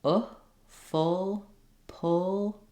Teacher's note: the shape of the uh vowel is also slightly rounded but the tongue is high and the mouth isn't very open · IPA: ʊ